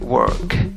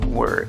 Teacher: En inglés británico a veces no aparece la R, no está la R en la pronunciación, pero en el americano sí lo ves.